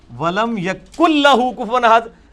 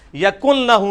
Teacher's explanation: لیکن نون کھایا جاتا ہے کیونکہ اس کے بعد لام آ گئی ہے، تو مکمل طور پہ وہ نون بیچ میں سے نکل جاتا ہے، اور یہ مکمل ادغام دو میں ہوتا ہے، لام میں اور را میں.